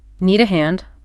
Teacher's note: Just make sure to use that rising intonation to make it sound like a question